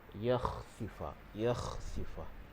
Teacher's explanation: Huruf kha ini makhrajnya di hujung kerongkong berdekatan dengan anak tekak. Jadi keluarnya di situ.